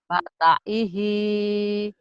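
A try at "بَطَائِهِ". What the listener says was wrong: bukan bata Bu, bato.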